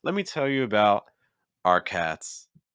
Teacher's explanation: The thought group ended. We're on our next thought group, and it shifts even lower in pitch.